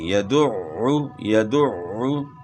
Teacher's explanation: عین کی آواز گلے کے درمیان سے بھی نکلی اور شد بھی ادا ہو گئی.